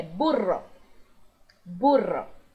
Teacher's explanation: Lembrando que o RR vai vibrar por mais tempo, não é apenas burro, é burro, burro.